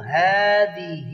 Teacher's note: ہاں کے اوپر کھڑی زبر ہے ایک الف کے برابر کھینچیں گے